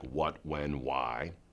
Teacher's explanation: it means that you use your two lips bilabial lips and you glide to the sound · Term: bilabial Glide